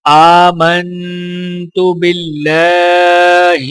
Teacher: ایمان مفصل، آمنت باللہ، حمزے کے اوپر کھڑا زبر ہے تو لہٰذا ایک الف کے برابر کھینچ کر پڑھا جائے گا، میم کو نون کے ساتھ ملاتے ہوئے غنہ کیا جائے گا، اور اللہ کے لام کے اوپر کھڑا زبر ہے تو ایک الف کے برابر کھینچیں گے اور لام کو باریک پڑھا جائے گا۔